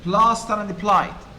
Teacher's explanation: The PL repeated the whole onset, not just the first sound. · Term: alliteration